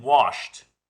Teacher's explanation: the ed sounds like a t